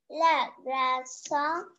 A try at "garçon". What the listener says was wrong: Le garçon. Le garçon. Not gra, ga. Garçon.